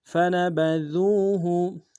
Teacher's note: فا نون با ان تینوں کو نم سے ادا کریں گے، دال کو واو کے ساتھ ملانا ہے، واو مدہ ایک انداز میں کھینچیں گے، دال کو باریک ادا کریں گے، ہا کو نرمی سے پڑھیں گے۔